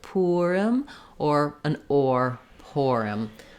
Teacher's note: Both have first syllable stress, and the letter I says the I sound in Purim.